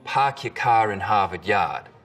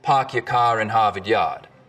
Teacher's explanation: We call this the start vowel. In Boston, it's usually pretty fronted.